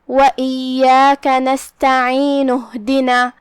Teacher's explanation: اگر ہم پچھلے والے آیت کو یہ آیت کے ساتھ پڑھتے ہیں تو ہم یہ حمزہ کو ادا نہیں کریں گے. وَإِيَّاكَ نَسْتَعِينُ اهْدِنَا، لیکن جو کہ آیت یہاں سے شروع ہوئی ہے تو ہم حمزہ کو ظاہر کریں گے.